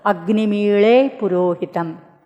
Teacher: da becomes la when it is caught between two vowels. And da plus ha, Mahaprana, becomes la plus Mahaprana, la. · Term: lakara